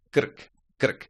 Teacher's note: It is a short one, but it can give you troubles because we, again, mustn't put any vowels, any schwas in between those consonants.